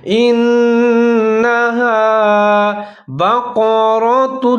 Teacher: ہا زبر الف آ، الف مدہ، اس کو تھوڑا سا لمبا کر کے پڑھیں گے